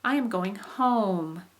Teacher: we popped up and then slid down · Now what I was giving you examples in also was using this kind of rising and then falling contour. And so you pop up with your voice and then come down